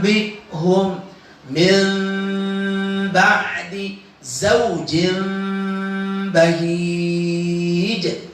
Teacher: Yang pertama, nun mati atau tanwin balik dia ke dalam huruf mim. Proses kedua, samarkan bunyi mim itu ketika menghadapi huruf ba. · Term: iqlab